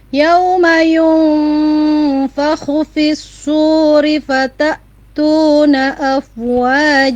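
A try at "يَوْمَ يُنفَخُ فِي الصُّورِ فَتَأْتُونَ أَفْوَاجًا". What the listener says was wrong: Tinggal dikit tadi tasydidnya huruf shad ditekan lagi lebih kuat. Fis-suri, tidak hanya fis-suri tapi fis-suri. S-nya ngalir dulu ya.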